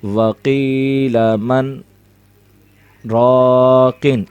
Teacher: من اور راقن کو پڑھتے وقت آواز کو روکیں گے لیکن سانس ایک ہی رہے گی۔ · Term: سکتہ